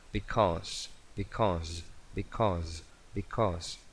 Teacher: Tiene que sonar una S una S sonora, vibración de las cuerdas vocales.